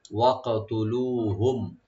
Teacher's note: মিম সাকিন এখানে আমরা জাহার করব, গুণা হবে না